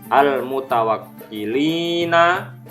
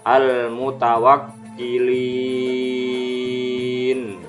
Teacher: Al-mutawakkilina dibaca al-mutawakkilin, huruf nun dibaca mati. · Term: mat arid lid sukun